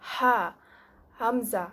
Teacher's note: Jadi untuk yang pangkal kerongkong, kita ada pangkal kerongkong bahagian sini paling bawah untuk ha dan hamzah. Jadi dia sebut mendalam lah.